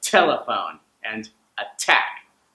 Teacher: That's just a fancy way of saying that some consonants are going to have an explosion of air, like instead of I'll hear t, like telephone and attack. Those are T sounds that English speakers will use a puff of air on. And with the T sounds, you'll hear the aspirated consonant a lot when the T is in the beginning of the word and in the middle of the word.